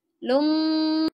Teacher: Ini melebur ke mim, terus ditahan ya. Lum, ditahannya 3 harokat, terus lafaz Allahnya harus dibaca tebal.